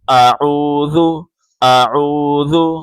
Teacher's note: جب آخر میں پہنچیں ذال پہ تو زبان باہر نکالنی ہے